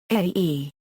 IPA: ɑ̈ː